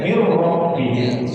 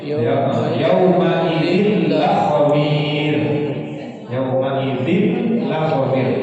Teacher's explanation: Jadi nun dengan roh, jadi nunnya masuk ke dalam huruf roh. Jadi seakan-akan ada kesatuan antara keduanya sehingga nunnya hilang.